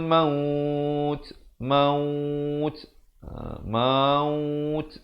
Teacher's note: Muncungkan dulu maut, last kali akhiri di makhraj huruf ta